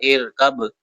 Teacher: next ارکب، red colour ہے last میں با، ایکو کریں گے قلقلہ